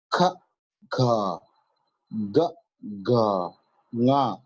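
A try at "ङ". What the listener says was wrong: Not nya, but nga.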